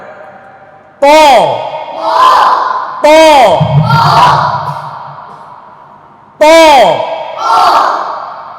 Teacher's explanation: জিহ্বার আগা, সামনের উপরে দুই দাঁতের গোড়ার সঙ্গে লাগাতে হবে। আর ত উচ্চারণ করার সময় জিহ্ব মোটা করার জন্য জিহ্বার গোড়াকে উপরে তুলতে হবে, জিহ্বার মধ্যখান তালুর সাথে উপরে লাগাতে হবে। তালুর সাথে উপরে, জিহ্বার মধ্যখানকে উপরের তালুর সাথে লাগাতে হবে।